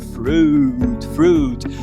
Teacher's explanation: a dificuldade do brasileiro com esse fonema é não prolongar